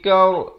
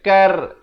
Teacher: Sepatutnya kena baca kaur. Jadi ra tebal.